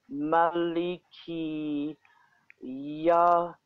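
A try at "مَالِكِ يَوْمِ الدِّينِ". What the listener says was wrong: Yawmiddin. Alif lam is silent. Alif lam is absolutely silent. Yawmiddin. Maliki Yawmiddin.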